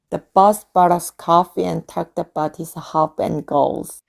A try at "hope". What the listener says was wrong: 발음 hope 였잖아요. 근데 hop 하셨어요. hop. hop은 뭘까요? 네, 요 이 없는 소리예요. hop은 깡총깡총 뛰어다니다라는 뜻이에요. 토끼가 hopping 한다라고 하거든요. 그래서 hop이라고 하시면 되고 hope. 어떻게 모음을 소리를 가져가느냐가 완전히 다른 단어로 탈바꿈할 수 있기 때문에 생각보다 되게 중요합니다.